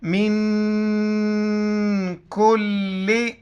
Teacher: نون ساکن ہے، یہاں پر اخفاء، ساؤنڈ ان نوز، ناک میں آواز چھپائیں گے